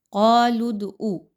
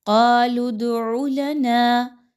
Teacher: حمزہ کی طرح عین کی آواز نہیں آنی چاہیے، بلکہ عین کے مخرج پر خاص توجہ دیجیے۔